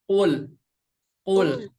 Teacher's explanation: Ul akan kerasa dari lidah bagian belakang. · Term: huruf Qaf